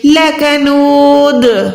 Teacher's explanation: दाल को हमने प्रॉपर कलकला यानी आवाज को लौटाना है